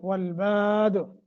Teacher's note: دال پہ رکیں گے تو قلقلہ کریں گے